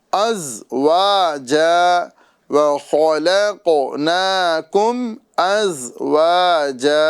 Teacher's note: زا کو پریشر کے ساتھ ادا کرنا ہے، ذال کی طرح ادا نہیں ہے، ازواجا نہیں بولنا ہے بلکہ از، ٹھیک ہے۔